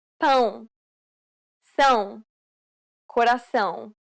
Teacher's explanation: It is similar to the ow sound in English, but with nasality. Saying the word pound repeatedly may sometimes help with pronouncing this sound.